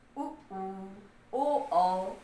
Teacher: जिसमें कि आपका होठ गोल बन रहा हो। उ ओ औ, ये 4 वृत्तमुखी हो गए।